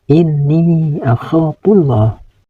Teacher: Pada bacaan ini ada huruf nun yang bertasdid. Huruf nun yang bertasdid ini harus dibaca guna, yaitu dibaca dengung ke hidung. Panjang dengungannya sekitar 1 alif setengah atau tiga ketukan.